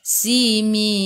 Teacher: Matikan dengan huruf nun, hujung lidah menyentuh gusi atas.